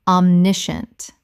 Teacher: 3 syllables in natural speech. The scient collapses to shunt.